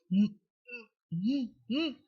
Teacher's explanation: En la articulación se cierra totalmente los labios, por eso es que el aire no sale por la cavidad bucal, sino por la cavidad nasal. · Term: bilabial sonoro